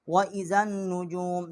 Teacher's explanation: ज़ाल को हमने नून के साथ मुशद्दद किया और यहाँ गुन्ना किया है